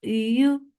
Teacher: So the ya is very soft. You. There is no j sound in it. · middle part of your tongue is lifting up towards your palate, but it is not touching it. So the ya is very soft.